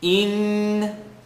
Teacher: Noon shadda, full nasal sound